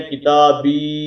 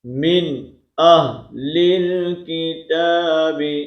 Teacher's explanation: تا کو ہم لمبا، با کو لمبا نہیں کریں گے